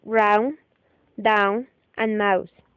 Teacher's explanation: The second diphthong is AU, as in round, down, and mouse. This is a combination of the sounds A and U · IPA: /aʊ/